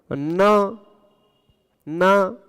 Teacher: न नाक के बिना आप नहीं बोल सकते ुकाम इत्यादि हुआ हो तो आप देख लीजिएगा कि आप न